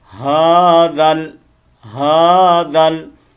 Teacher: آپ اس دال کو آگے لام کے ساتھ کنیکٹ کریں گے. ہاذل دال زبر لام زل جوڑ کر تو بعد یہ الف بھی نہیں پڑھا جائے گا، یہ الف بھی نہیں پڑھا جائے گا، یہ لام بھی گر جائے گی.